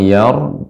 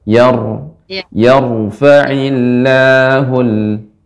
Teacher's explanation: ketika mengucapkan yar rnya dibaca dengan tebal